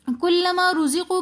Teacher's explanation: کلما رزقو کے اندر را کے اوپر زبر ہے تو اس لیے ہم را کو موٹا کر کے پڑھیں گے. زا سیٹی والے حروفوں میں سے ہے تو اس لیے ہم روزی زی زا کو تھوڑا سا سیٹی کے ساتھ اور سختی کے ساتھ پڑھیں گے.